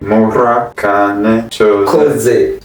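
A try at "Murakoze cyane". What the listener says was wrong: Koze. The first part you changed it. Mura koze chane. Chane.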